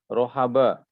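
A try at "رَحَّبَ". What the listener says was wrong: Mumtaz, tapi tasydid.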